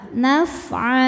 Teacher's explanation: Cara bacanya baris 2-nya ini jadi 1, jadi fathah ya. Naf'a dan panjang 2 harokat. Naf'a. Di atasnya ada tanda waqaf namanya al-waqfu aula, artinya berhenti lebih utama. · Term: mad iwad